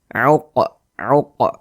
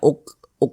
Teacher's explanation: kalau dia sukun maka cara membacanya dipantulkan jadi ini kita pantulkan bacanya Q uq begitu Jangan dibaca uk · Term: Qalqalah sugro